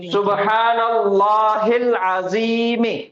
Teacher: یہ بھی ایک اسم ہے جس کی شروعات الف لام سے ہو رہی, اور پہلا حرف جو ہے وہ عین ہے, اور عین حروف قمریہ کے 14 حروفوں میں سے ایک حرف ہے, اس وجہ سے لام سکون کے ساتھ پڑھا جائے گا, حمزۃ الوصل ڈراپ ہو جائے گا, اور یہ لام پچھلے والی حرکت سے ملے گا